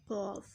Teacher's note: ज़ुबान की जड़ और तालु के नरम हिस्से से अदा होता है